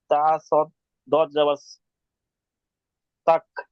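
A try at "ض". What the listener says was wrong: তা দত যাবার তাও, সদ হবে না, দত হবে। সদ না, সদের নোক্তা থাকে না, দত, দতের একটি নোক্তা আছে।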